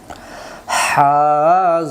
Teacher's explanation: লম্বা হা হলকের মধ্য থেকে শোষ করে পড়তে হয়